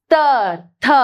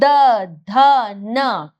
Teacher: जब हम उच्चारण करते हैं वर्णों को तो हमारी जीभ दांतों में टच करती है, सामने से नहीं पीछे से, नीचे से। तो जब हम त थ ऐसे करके बोलते हैं द ध न, तो हमारे बिल्कुल सही उच्चारण बैठता है। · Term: दंत्य